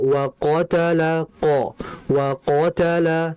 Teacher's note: Maka kondisi tebal qof itu ketika fathah jelas sekali.